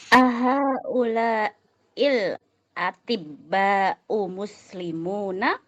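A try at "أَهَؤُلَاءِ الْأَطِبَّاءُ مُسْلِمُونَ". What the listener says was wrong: Ahaula'il atibba'u muslimuna. Bagus.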